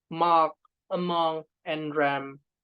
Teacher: M, voiced bilabial, when you pronounce mark, among, and ram, and etc. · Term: nasal